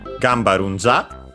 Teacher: with the voicing of the consonant, because it's the second part of a compound of strictly Japanese origin